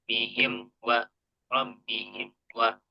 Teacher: di ya di mim sukunnya tadi ya. Jadi terdengar ee sedikit lemah di huruf mimnya suaranya baru naik lagi di huruf wa